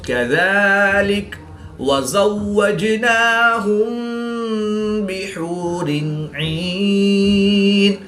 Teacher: دو زیر کی تنوین کے بعد عین حروف حلقی میں سے ہے تو یہاں پر اظہار ہوگا، غنہ نہیں کریں گے بلکہ دو زیر کی تنوین کو ظاہر کر کے پڑھیں گے۔ · میم ساکن کے بعد حرف با ہے تو یہاں پر اخفاء شفوی ہوگا، یعنی غنہ زمانے کر کے پڑھیں گے۔